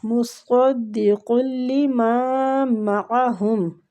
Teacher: صاد مستعلیہ حروف ہے، پر پڑھیں گے۔